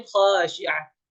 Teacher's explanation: ketika berhenti khasyi'ah tanwinnya tidak lagi terbaca